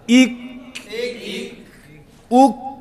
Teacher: آواز رکے گی شدت کی وجہ سے, سانس جاری ہوگا حمز کی وجہ سے